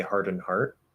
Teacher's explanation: it is also very common that if you have nd at the end that we just dropped a d